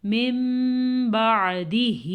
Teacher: تو اقلاب کا قاعدہ ہو رہا ہے، نون کے بجائے میم پڑھا جائے گا، غنے کے ساتھ پڑھا جائے گا